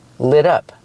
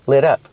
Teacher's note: We hear the pronunciation of the T in lit up. It sounds like a fast D.